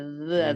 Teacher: জালের উচ্চারণ জিহ্বার আগা দাঁতের আগা